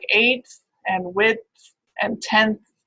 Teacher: So it's already in that area of the teeth, it's pretty close, occurring before another dental sound, a dental fricative. So that alveolar sound gets pulled towards the teeth